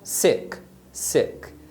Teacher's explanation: é um som curto e mais fechado por exemplo na palavra Seca seca tá vendo eh se não · Então esse som do E, que é um som bem curto, por isso que a vogal é chamada de vogal curta, então é um som curto e mais fechado. Por exemplo, na palavra sick, sick.